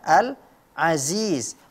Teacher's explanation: huruf Ain dibaca menjadi Hamzah